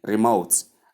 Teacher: The stress comes on the second syllable.